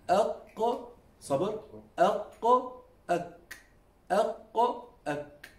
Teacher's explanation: This is what we call the soft palate. The qaf and the kaf, they are pronounced by touching the back of the tongue, now, by touching the soft palate.